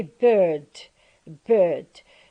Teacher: the R is not pronounced in British English when it occurs in the coda position of the syllable